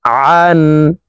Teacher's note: আইন হরফকে হলকের মধ্যখান থেকে উচ্চারণ করে পড়ব, কারণ আইনের মাখরাজ হলকের মধ্যখান থেকে হবে।